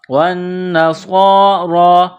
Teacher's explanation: صاد کو موٹا کرنا ہے، صاد میں سیٹی کی آواز پیدا کرنی ہے، را کے اوپر کڑا زبر ہے تو را کو موٹا کرنا ہے، ایک الف کی لمٹ میں اس کو کھینچیں گے۔